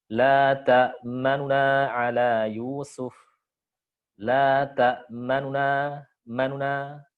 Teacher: Aslinya la ta'manuna, nu-nya diucapkan tapi pelan. Lebih pelan volumenya dan lebih pendek harokatnya. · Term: ikhtilas